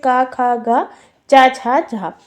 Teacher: अघोष व होती है स्वर्ण तंत्र जिनमें कंपन नहीं होता है जब हम उन्हें उच्चारण करते हैं उन वर्णों का तो कोई कंपन नहीं होता